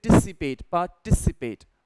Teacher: इसमें हमें स्ट्रेस देना होता है TIC पे